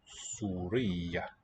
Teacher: That's a geminate ya at the end.